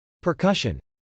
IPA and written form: pɚkˈʌʃən (percussion)